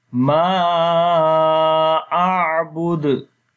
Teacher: on the dal we make strong qalqala